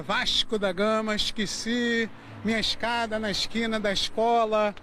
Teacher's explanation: Esse S meio misturado com X, trocando o E pelo I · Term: chiado carioca